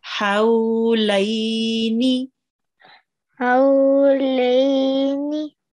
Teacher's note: the ha, this ha, has to be pronounced from the middle of your throat